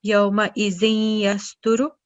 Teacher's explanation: We're joining zal that carries a tanween to ya mushaddad.